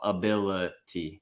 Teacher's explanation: the second I goes right back down to that lazy schwa only the stressed syllable is is using a real vowel